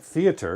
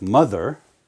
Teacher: and then you have a choice vibration or just air so a word like theater is unvoiced but a word like mother has that vibration